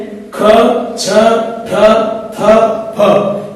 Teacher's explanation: इस ध्वनि के उच्चारण में प्राणवायु का अधिक उपयोग होता है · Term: महाप्राण ध्वनि